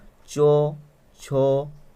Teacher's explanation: যে ব্যঞ্জন ধ্বনির উচ্চারণে শ্বাসবায়ুর বহির্গমন পথ প্রথমে রুদ্ধ হয়ে তারপরে সামান্য মুক্ত হয় এবং ঘর্ষণের মতো হয়ে শ্বাসবায়ু বহির্গত হয়, সেই রকম ঘর্ষিত ব্যঞ্জন ধ্বনির নাম হচ্ছে ঘৃষ্ট ধ্বনি বা ঘর্ষিত ধ্বনি।